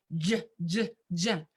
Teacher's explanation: The J sound, which is more palatal, alveolo-palatal.